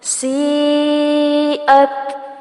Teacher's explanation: سیئت سی پر مد کی جائے گی اور تا ساکن ہونے پر ہمس ہوگا